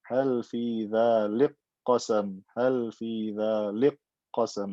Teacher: I've merged the kaf into the qaf. It becomes qaf with shadda.